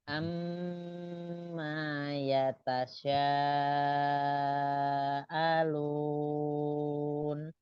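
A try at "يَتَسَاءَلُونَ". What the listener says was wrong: Ya tasa, sin biasa. Hanya pendek. Amma yatasaalun.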